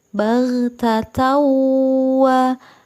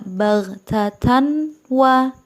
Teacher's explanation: memasukkan tanwin ke dalam huruf wow dengan dengung